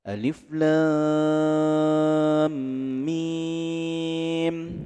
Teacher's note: Ini disebut dengan mad lazim mustaqil harfi. Kalau kita memakai 6 harokat, 6 harokat panjangnya.